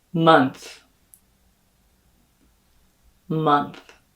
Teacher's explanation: the o spelling is going to be realized as an uh like in my pronunciation of the word stuff and that th is not going to have any phonation or · that TH is not going to have any phonation or buzz here in your vocal folds.